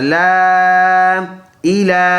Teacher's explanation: چھوٹا مد ہے، ایک کلی کی مقدار لمبا کریں گے